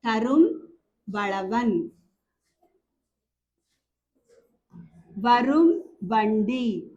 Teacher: இந்த மகரத்துக்கு அடுத்தால வகரம் வந்துச்சுன்னா இந்த மகரமும் தன்னுடைய ஓசையில குறுகி ஒளிக்கும் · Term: மகர குறுக்கம்